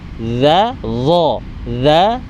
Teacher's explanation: Pangkal lidah itu naik ke langit-langit. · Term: dha tebal